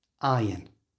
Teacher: In the word iron, the R you can see is followed by a vowel sound, but the R is silent.